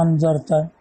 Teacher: بتخفیف الثانیۃ بین بین وقلبها الفن، اور دوسرے حمزہ کی تخفیف بین بین یعنی حمزہ کو حمزہ اور الف کے مخرج کے درمیان پڑھنا